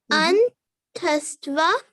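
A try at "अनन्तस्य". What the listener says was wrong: Anantasya. Yeah, sorry, the Y is not kind of very clear, right? It's yet.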